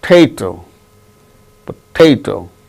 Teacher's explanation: The second syllable gains stress.